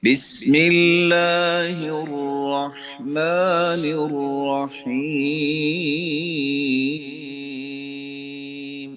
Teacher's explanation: आगे बिस्मिल्लाहहिर बा को लंबा नहीं करेंगे